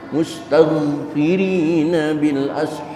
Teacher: Jangan mustaghfirin, karena ghin bukan huruf qalqalah. Bersihkan dari pantulan qalqalah, baca tanpa qalqalah.